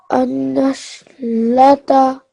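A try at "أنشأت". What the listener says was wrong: This is a alif actually.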